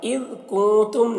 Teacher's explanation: اذ کنتم نون میں اخفا ہو رہا ہے. یہاں پر میم میں اظہار شفوی ہو رہا ہے.